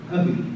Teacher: Notice it makes a V sound instead of an F, soft F.